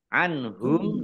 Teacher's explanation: nun sukun bertemu dengan huruf ha bacaan izhar dibaca jelas